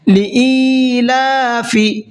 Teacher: या साकिन से पहले ज़ेर है तो इसको खींच करके पढ़ेंगे · लाम के ऊपर खड़ा ज़बर है, इसको भी खींच करके पढ़ना है।